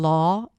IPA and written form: lɔː (law)